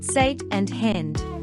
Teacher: The short A in words such as sat and hand is pronounced a bit more like E. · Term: short A sound